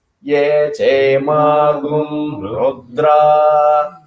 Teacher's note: That gu, you should not give any stress.